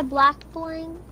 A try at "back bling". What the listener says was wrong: Crew, it's not a black bling. It's a back bling. It's a back bling. No, you're saying the bling right, crew. You're saying black.